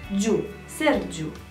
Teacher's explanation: giu este o singură silabă nu este ghi u sau gi u